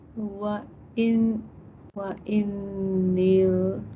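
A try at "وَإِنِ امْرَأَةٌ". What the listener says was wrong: There's no alif lam. Yes, wa inim ra'atun. And this hamzatul wasl with a little tadpole on top, or the head of the sod, yep, disappears. So this is why it's called that. It joins the nun to the mim, and it's very silent. You don't say it.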